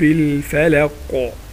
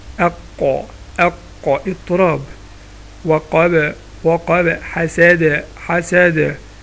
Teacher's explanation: هتلاقي الفلق في القاف عملت قلقلة